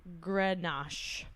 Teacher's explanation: I was told to stress on the first vowel